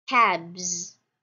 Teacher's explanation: this consonant is voiced so therefore if we're gonna add the morpheme as its plural form ah it will be read as cabs